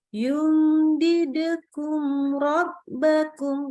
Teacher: Karena dia idhar syafawi. Mimnya kita baca jelas, nggak boleh tahan-tahan, nggak boleh dengung ditambahkan.